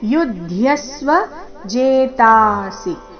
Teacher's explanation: ಯುದ್ಯಸ್ವನಲ್ಲಿ ಮೂರು ಅಕ್ಷರ ರಸ್ವ ಇದೆ ಜೇತಾಸಿ ಸಿ ಮಾತ್ರ ರಸ್ವ